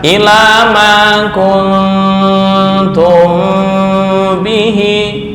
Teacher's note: Kun ini dengung ikhfa, mim bertemu ba ikhfa syafawi. Ukurannya sama.